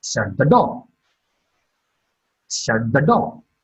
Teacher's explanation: Door is marked with a falling tone.